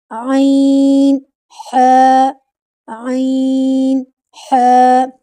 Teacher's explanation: इनको भारी आवाज के साथ अदा करेंगे। जब हलक वाले हरूफ अदा करते हैं तो जो हलक का दरमियान वाला हिस्सा होता है वह वाइब्रेट करता है।